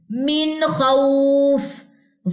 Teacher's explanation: وقف کی صورت میں اکثر لوگوں کا فا میں سانس جاری نہیں ہو پاتا، تو اس کی پریکٹس یہاں سے کریں. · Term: فا کا وقف